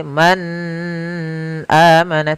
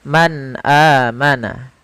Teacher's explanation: suara nunnya harus jelas tidak boleh ditahan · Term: izhar